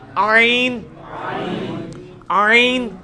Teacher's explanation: ہا کا مخرج جو ہے نا یعنی وسط حلق، ادھر ہی سے یہ آئین بھی نکلنا ہے